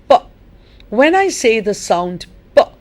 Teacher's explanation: I hold my breath for a split second. You put your lips together, so the air within your mouth is held there.